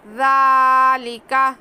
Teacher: ذال کو نرمی سے بغیر سیٹی کی آواز کے. ذالک ایک الف کے برابر کھینچیں گے, کھڑا زبر ہے.